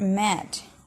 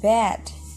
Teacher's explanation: substitute the initial bilabial nasal M with the bilabial plosive B in order to make the new word bad